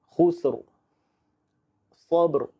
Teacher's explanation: Kita matikan dengan huruf ra yang tebal.